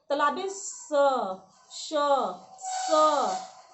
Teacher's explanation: जिसके उच्चारण में सीटी का अनुभव हो, लगे कि सीटी निकल रहा है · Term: ऊष्म व्यंजन